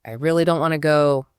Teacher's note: that heavy stress on really, that tells you a lot about how they feel, even if the rest of the sentence was a bit blurry and fast.